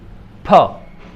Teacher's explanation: फ की विशेषता ये है कि ये बाइलेबियल है, महाप्राण ध्वनि है, प्राणवायु का ज़्यादा प्रयोग होता है, प्राणवायु का ज़्यादा प्रयोग होता है, यानी महाप्राण ध्वनि है।